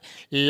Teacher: होता पार्स का अर्थ होता है इधर-उधर साइड से बगल से इसके उच्चारण में जिव्या का अगला हिस्सा ऊपर तालू से छूता है और हवा जो है वो इधर-उधर बगल से जीभ के साइड से निकलती है ला के उच्चारण में इसलिए इसको कहा जाता है पार्श्विक समझ